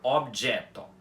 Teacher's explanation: A pronúncia correta da palavra é objeto, com os 2 Os abertos, tanto o primeiro quanto o final, ok? E outra coisa que vocês podem até perceber aqui é que as 2 letras O dessa palavra são átonas e não tônicas. · as 2 letras O dessa palavra são átonas e não tônicas. E mesmo assim, elas continuam com o fonema O em balborano, já que não importa o lugar em que ela esteja, que ela vai continuar com o fonema O.